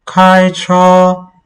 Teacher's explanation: It's still a high tone. Remember, the first tone is a high pitch tone